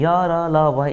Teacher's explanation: य र, ल व इसमें थोड़ा सा कम हवा निकल रहा है और कम ऊर्जा खर्च हो रहा है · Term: अल्पप्राण